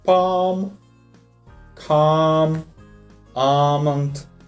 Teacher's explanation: Второй вариант, где вы можете встретить этот звук, это комбинация букв A, L, M. Обратите внимание, что буковка L в этом случае не читается, она просто исчезает, остается только звук A.